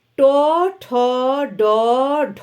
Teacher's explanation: ঝ ইয় নেক্সট ট ঠ ড ঢ মূর্ধন্য মূর্ধা স্পর্শ করে মূর্ধা মানে তালুর অগ্রভাগ তালুর অগ্রভাগ স্পর্শ করে